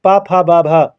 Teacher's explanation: ओष्ठ ध्वनि के अंतर्गत आएगा